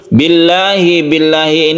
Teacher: ini lafadz Allah yang dibaca tipis karena sebelumnya kasrah